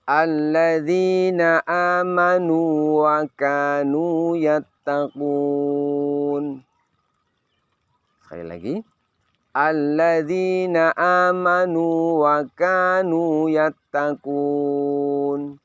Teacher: Yang pertama wawunya sukun, yang kedua wawunya fathah. Namun di sini wawu sukun tidak diidghamkan ke wawu fathah.